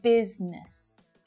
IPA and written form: 'biz nəs (Business)